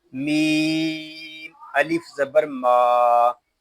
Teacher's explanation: میم کو ہم ایک الف تک کھینچ کر پڑھیں گے کیونکہ یہاں الف مدہ ہو رہا ہے. میم کو ادا کرتے وقت ناک میں آواز نہیں جانی چاہیے، اس کو ماں اس طرح نہیں پڑھیں گے، اس کو پڑھیں گے ما.